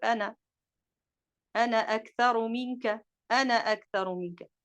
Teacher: mais en cas d'enchaînement, le alif tombe